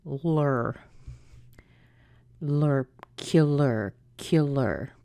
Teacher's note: the LAR is also unstressed. That is lur